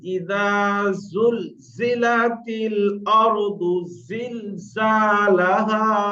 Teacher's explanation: সামনের উপরে দুটো দাঁত, নিচে দুটো দাঁত, এই চারটে দাঁত সানায় উলিয়া সানায় সুফলা, এই চারটে দাঁতের আগায় জিভের আগাটা এসে যেন চাপ লাগে, তাহলে আপনার জা উচ্চারণ হবে ইদা জুলজিলাতিল আরদু জিলজালাহা।